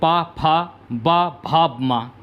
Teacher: होंठ से जिन वर्णों के उच्चारण में दोनों होंठ स्पर्श करते हैं उन्हें होष्ठ वर्ण कहते हैं।